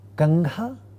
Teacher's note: in the first word, Kangha, the nasal is a velar nasal ng